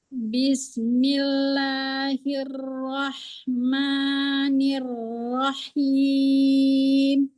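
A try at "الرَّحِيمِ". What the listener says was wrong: Nirrohim. Masih kurang buka ya di ro-nya. Berarti PR pertama hurufnya ro. Nirrohim. Kemudian hi-nya jangan pakai jangan hi. turunin nih, Bu. Justru diturunin. Nirrohim. Bukan ininya. Bukan ini ditarik, tapi ini diturunin. Nirrohi. Nirrohim. Kalau hi itu gitu.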